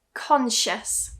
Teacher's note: it's not a s here, but a shh